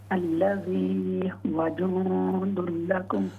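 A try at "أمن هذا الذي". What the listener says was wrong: ہاں جی, اوپر دو لفظ رہ گئے. من هذا الذی.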